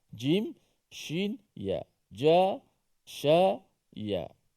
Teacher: Huruf shin yang berada pada makhraj di wasatul lisan, iaitu tengah lidah.